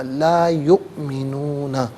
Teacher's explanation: وَأَنَّ الَّذِينَ، لا علیحدہ ہے، یؤمنون علیحدہ ہے، ملا کر پڑھیں گے لا یؤمنون۔ یؤمنون میں حمزہ ساکن ہے، اسے جھٹکے کے ساتھ پڑھا جائے گا